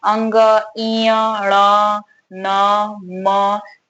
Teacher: हवा जो है वो नाक से निकल रही है, इसीलिए इसे नासिकीय वर्ण कहते हैं।